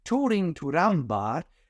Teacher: he's using a schwa, a weak syllable